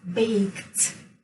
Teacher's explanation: So k is voiceless. That's why we say baked. We pronounce it as t.